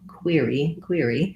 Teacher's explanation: the first one is going to be longer the second one is going to be shorter because we have a stressed vowel and an unstressed vowel · is the tense e sound in query and then we have another tense e for the y syllable but the first one is going to be longer the second